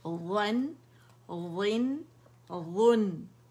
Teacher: وا موٹا ہے، نون باریک ہے